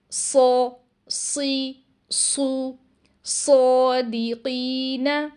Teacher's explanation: صاد کی ادائیگی کے لیے زبان کی جڑ کو بھی اوپر اٹھایا جاتا ہے اور آواز کو اس حصے میں ٹریپ کر دیا جاتا ہے تاکہ ہمیں اس کی آواز ہیوی سنائی دے، جیسے سو، سی، سو، صادقین۔